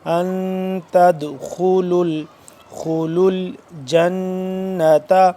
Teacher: دال یہاں پہ ساکن ہے، اس پہ بھی ہم قلقلہ کریں گے